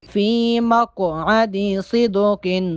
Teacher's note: قوف ساکن ہے، قوف پہ قلقلہ کریں گے